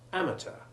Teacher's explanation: keep the sound of the T hard. You'll sometimes hear it mispronounced as soft CH, and this should not be imitated. · The word amateur, however, has been anglicised. The stress has moved from the last syllable to the first, and the EUR ending has the short E2 sound.